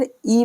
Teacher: یعنی الف زیر ای پڑھنا ہے، الف زیر اے نہیں پڑھنا ہے، اور با زیر بی پڑھنا ہے، با زیر بے نہیں پڑھنا ہے۔ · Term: معروف